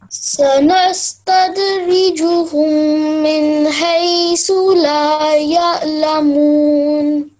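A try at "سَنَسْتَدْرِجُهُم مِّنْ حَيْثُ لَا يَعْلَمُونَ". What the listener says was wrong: Well done, excellent, impressive. You have done impressive performance.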